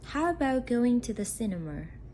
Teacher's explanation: in this case the pitch goes up at the beginning and gradually down at the end